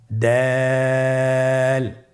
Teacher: জিহ্বার আগা সামনের উপরের 2 দাঁতের গোড়ার সঙ্গে লাগিয়ে উচ্চারিত হয় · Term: দালের মাখরাজ